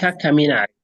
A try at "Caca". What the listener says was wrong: Caca. Not Kaka, but Caca. Caca. Just like in membaca, Caca.